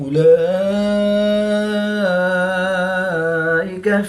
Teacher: کھڑی زبر کے بعد حمزہ اسی کلمے میں ہے تو یہاں پر مد متصل ہوگی. 3 سے 5 الف تک کھینچ کر پڑھیں گے